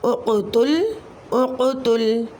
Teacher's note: قاف حروف قلقلہ میں سے ساکن حالت میں کلمے کے درمیان میں آ رہا ہے، تو یہاں قلقلہ صغریٰ ہوگا